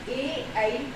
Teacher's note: ए ऐ का उच्चारण स्थान क्या होता है, कंठ तालु। कंठ तालु यानी कि गले से और तालु से होता है।